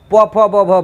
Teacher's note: बिना तुम दोनों होठ को सटाए प फ ब भ बोल नहीं सकते हो। इसलिए इसको ओष्ठीय वर्ण भी कहा जाता है, ओष्ठीय व्यंजन भी कहा जाता है।